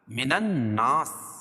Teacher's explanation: ناس نون مشدد ہے، غنہ ہوگا